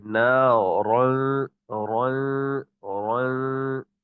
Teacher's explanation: نارن کا جو غنہ ہے نا وہ باریک ہے، لیکن لفظ نارن کا جو را ہے وہ موٹا ہے. را موٹا پڑھیں گے، غنہ باریک کریں گے. نارن رن رن اس طریقے سے.